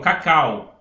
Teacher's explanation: A é a minha vogal, que é mais forte. E o u, que é mais fraco, cal, u, a gente quase não escuta, é minha semivogal.